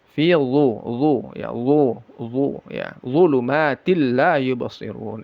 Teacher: Dha ini makhrajnya ujung lidah yang menempel ke ujung gigi seri atas. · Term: zal yang ditebalkan